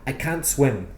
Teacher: most native speakers don't pronounce the T at the end of the negative can't.